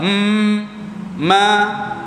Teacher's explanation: Suara sebahagian dari suara keluar ikut hidung. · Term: huruf mim